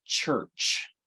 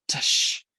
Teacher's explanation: You're saying a T followed by an SH sound. Tush. It's you're doing them one at the same time, basically.